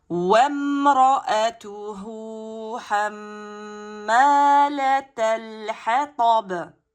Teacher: on ralentit et on amincit le ba, bien sûr, qui finit en soukoun et qalqala